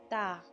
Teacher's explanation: ता जबान की नोक और ऊपर के दांतों की जड़ से अदा हो रहा है